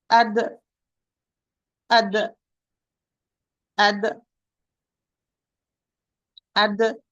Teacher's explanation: حرف شديد. tight. حرف مجهور. voiced. حرف مرقق. light letter. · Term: dal with sukun